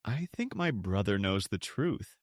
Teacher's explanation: Did you feel the vibration on brother and the air on truth?